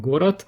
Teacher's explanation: Произносится оно как в русском город с оглушением д